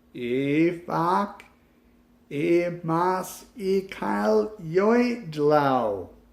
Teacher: reversing the sounds and the syllables but the arc as well rather than going from a low note to a high note you are actually going from a high note to a low note